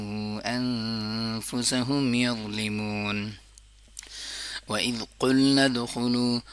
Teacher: कौफ जुबान की सबसे आखिरी वाली जुबान की जड़ से अदा होता है। जुबान का जड़ जब नरम तालों के साथ लगता है तो उससे कौफ अदा होता है।